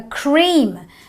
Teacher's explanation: I always have the E sound, the long E sound, which makes my lip go E.